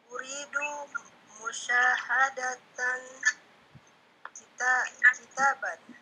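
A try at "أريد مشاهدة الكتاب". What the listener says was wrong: Syaknya yang panjang.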